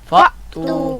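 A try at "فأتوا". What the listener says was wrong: فأتو، تو یہاں اس بات سے بچنا ہے کہ ہا کی آواز نہ آئے، فأتو نہ پڑھا جائے۔ کیا نہ پڑھا جائے؟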